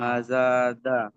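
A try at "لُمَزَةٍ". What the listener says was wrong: লুমাজাহ, ঝাটকা মারতে হবে লাস্টে, গোলতা আছে, গোলতা লাস্টে হা হয়ে যাবে, লুমাজাহ।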